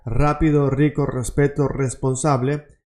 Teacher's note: always when the R is the first letter of the word, then it's pronounced like a double R